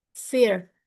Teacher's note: R is a post-alveolar approximant produced by curling or bunching the tongue near the roof of the mouth without touching it.